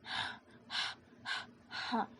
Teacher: چھوٹی ہا میں ہوا کی آواز آتی ہے